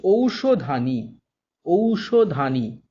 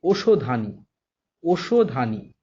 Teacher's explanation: ওই আর ঔ, এই দুটি যৌগিক স্বর একক স্বরে পরিণত হচ্ছে · ঔ পরিণত হচ্ছে ওতে